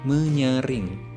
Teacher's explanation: Perhatikan contoh kata menyaring yang berasal dari kata dasar saring mendapat imbuhan me-ny sehingga membentuk kata menyaring. Huruf S pada kata dasar saring hilang dan digantikan oleh nasal ny.